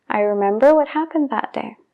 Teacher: I remember what happened that day. Ahora, si estoy hablando normal, no tengo prisa, sí que pronuncio la B